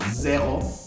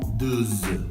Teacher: La Z, esa sí la tienes que vibrar más que la S.